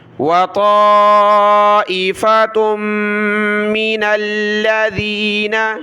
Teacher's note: تا کو میم کے ساتھ ملایا ، وطائفة من الذین، نون کو لام کے ساتھ، من الذین،